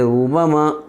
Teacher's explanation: پیش کو جلدی پڑھیں، تھوڑا بنا کھینچے معروف پڑھیں، مجھول آواز سے بچیں